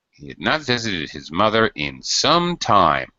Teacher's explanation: I like the stretching of the vowels to emphasize it